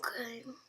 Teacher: it's kind of in between a normal voice and a whisper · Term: confidential voice